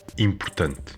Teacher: the O is reduced, and A is reduced to E, or basically disappears. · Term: vowel reduction